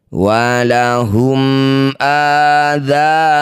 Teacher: Mim sukun bertemu bukan mim bukan ba. Baca jelas mim sukunnya. Rapatkan bibir tanpa dengung. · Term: izhar syafawi, idhar syafawi